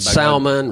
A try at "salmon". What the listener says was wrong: No, it's salmon. You don't pronounce the L.